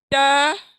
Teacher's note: अपनी जबान की जो नोक है ना, वो सामने के दांतों के मसूड़ों से, यानी जड़ से, सामने के दांतों के जड़ से टच होती है, टच, यानी उसको लगने से अदा होती है।